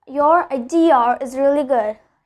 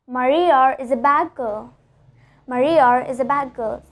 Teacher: I told the letter R in both of the sentences to connect idea to is and Maria to is